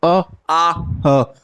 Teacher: अ आ ह ये आपका कंठ से बोला जा रहा है